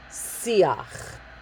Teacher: So for the first one we have in line A, siach, not siach, not siyach, siach, okay? So it's not a guttural siach, and it's not with a strong yud, siyach.